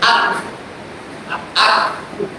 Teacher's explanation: kalau Kaf itu ada sifat hamesnya, ada udara yang mengalir. Maka kalau disebutkan menjadi ak, ya.